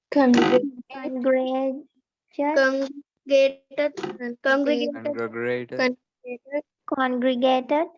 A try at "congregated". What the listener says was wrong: Very good. I like that you didn't give up trying.